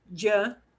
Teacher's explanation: when you hear a double l it'll sound like yeah but i have a little j that goes in front of that y sound